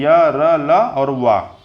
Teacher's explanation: जिन वर्णों के उच्चारण में जीभ, तालु, दांत, ओठ आपस में हल्का स्पर्श करते हैं उन्हें अंतस्थ व्यंजन कहते हैं। मतलब जिन वर्णों के उच्चारण में जीभ जो है, तालु, दांत, ओठ आपस में हल्का स्पर्श करते हैं उन्हें अंतस्थ व्यंजन कहते हैं।